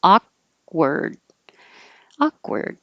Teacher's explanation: you don't have to release the k akka word hold your tongue in the k position awkward awkward